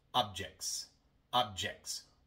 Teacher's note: Y ahora tenemos CTS. Una T entre dos consonantes. Y ahora omitimos la T.